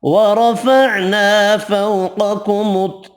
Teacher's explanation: را زبر کی وجہ سے پر پڑھیں گے، الف مدہ ایک الف کی مقدار میں کھینچ کر پڑھیں گے، فو واو لین ہے، قاف حروف مستعلیہ پر پڑھیں گے۔